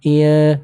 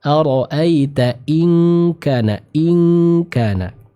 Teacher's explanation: ketika bertemu dengan huruf kaf maka sempurnakan pembacaan ikhfanya dengan dengung yang sempurna